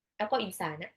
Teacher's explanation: Tapi insana nunnya tuh disamarin. Jadi nggak kedengeran jelas bahwa itu nun sukun. Insana disamar dan ditahan.